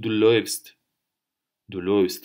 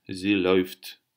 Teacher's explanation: А умляут и у читается как ой.